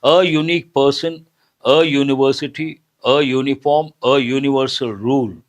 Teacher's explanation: A vowel letter, but the sound is consonantal sound. Ya sound is a consonantal sound. Based on that, we should not say an, we have to say a.